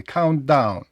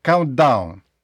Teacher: не треба старатися вимовити і звук т і звук D привимові а просто так якби один звук countd ще ви можете